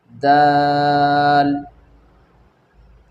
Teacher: ज़ुबान की नोक सनाया उलिया सामने के ऊपर के दो दांत के जड़ों में लगने से दाल अदा होता है,